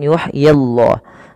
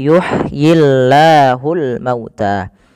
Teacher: lafal Allah bila didahului dengan huruf kasrah maka tidak boleh ditebalkan Nah di sini kita namakan dengan lamut tarqi lam yang tipis